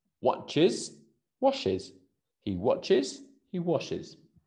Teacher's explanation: cuando termina en la CH o la SH, aumentamos is